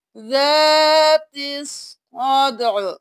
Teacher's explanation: حرکت کو گرا دیں گے، ذات الصدع، صرف عین کی آواز آئے گی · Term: عین کو ساکن